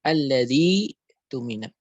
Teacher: ketika huruf mad mendahului hamzah wasal, maka tidak dipanjangkan, dia hanya dibaca dengan dua harokat